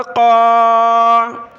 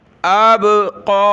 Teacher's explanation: قاف کے اوپر کھڑا زبر ہے، ایک الف کی لمٹ میں ہم نے اوپر کی طرف کھینچنا ہے اور اس یا کو نہیں پڑھنا، قاف کھڑا زبر قا، اب قا، اب، اب قا، وقفاً اب، اب قا، اب قا۔